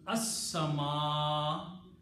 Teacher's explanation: seen is a shamsi letter, it kills the sound of lam. And you have to pronounce seen two times. So it becomes as-sama.